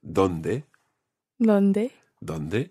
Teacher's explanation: we need to remember our nice soft Spanish th sound